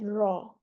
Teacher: दो दफा आवाज रॉ, रोल होती है आवाज, कपकपी पाई जाती है, ऐसे लगता है रॉ, सिर्फ रॉ है। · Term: तकरीर